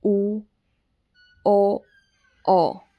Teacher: जिन स्वरों के उच्चारण में ओष्ठ मतलब होंठ वृत्त का रूप धारण कर लेते हैं, वो वृत्ताकार स्वर कहलाते हैं।